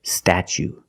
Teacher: Then we use the ch sound, statue. For the second syllable, we use the long oo like boot and moon